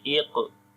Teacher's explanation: only we say weak qalqala, as the qalqala letter is coming in the middle of the word. So we say iqra, ra, and after the ra there is alif with sukoon sign on it.